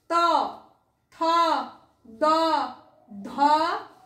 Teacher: ত থ দ ধ দন্তন্য, জিভ কোথায় ঠেকছে? আমাদের দাঁতে ঠেকছে, তার জন্য একে বলা হচ্ছে দন্ত বর্ণ।